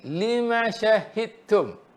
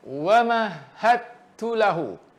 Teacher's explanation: Dal tenggelam masukkan ke ta.